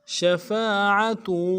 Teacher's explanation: شین کو تفشی والا حرف ہے، شین تفشی واضح کریں گے، شیم کے بعد فا ہے، فا کے بعد سات الف مدہ ہے، ایک الف مدہ میں کھینچیں گے.